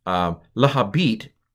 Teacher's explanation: the first nun because it was right next to the bet has assimilated, sucked in, and it's become a doubled bet